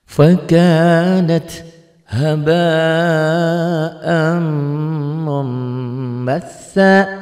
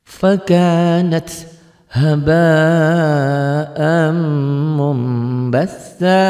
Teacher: Maksudnya bunyi nun matinya berubah menjadi mim mati. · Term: iklab